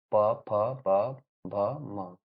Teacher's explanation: प वर्ग या प खांधा का जो है उच्चारण स्थान दियो होंठ सोटले है। जब ये वर्ण बोला जाता है तो इसमें जो है लिप्स जो है सट जाता है